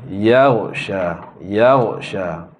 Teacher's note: Dia mungkin agak tricky sikit kerana ghin itu adalah huruf isti'la, huruf tebal kan. Tapi ya tu janganlah ditebalkan.